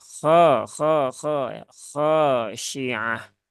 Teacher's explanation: Ho-nya ada alif maka dibaca panjang cukup 2 harokat. Kemudian huruf shin ya dia ada sifat tafashi jadi ada apa namanya udara ya udara yang keluar menyembur dari dalam mulut ya shi ya tapi itu tidak perlu sampai berlebihan menjadi shi nah, gitu.